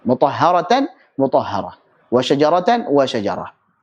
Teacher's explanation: Kecuali tak marbutah, tidak dibaca sebagai alif. Tapi tak marbutahnya diubah menjadi huruf ha sukun.